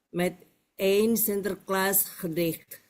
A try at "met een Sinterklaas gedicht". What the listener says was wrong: Met en. Kalau di sini dibacanya karena dia partikel met en, bukan met een. Met een Sinterklaas gedicht.